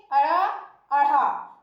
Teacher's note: जब हम इनका उच्चारण करते हैं तो हमारी जीभ की जो नोक है वो हमारे तालु को झटके से तो छूती है पर थोड़ी दूर तक स्पर्श करती है। तो जब हम इन वर्णों का उच्चारण करते हैं तो हमारी जीभ और हमारे तालु का तालमेल हमें मिलता है। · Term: उच्छित व्यंजन